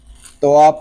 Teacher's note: یہاں تو اس لیے پر ہے کہ یہ حروف مستعلیہ میں سے ہے، واو مدہ اس لیے ہو رہا ہے کہ واو ساکن سے پہلے پیش آ گیا ہے، را اس لیے باریک ہے کہ را کے نیچے زیر آ گیا ہے۔